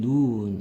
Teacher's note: 하늘에서 내리는 눈, 이거는 길게 소리가 나는 거고요.